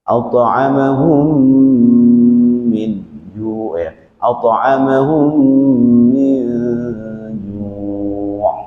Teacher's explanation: mim bertemu mim itu adalah idgham mutamatsilain atau disebut idgham mimi